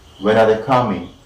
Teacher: upon the first syllable of coming, we are marking the primary word stress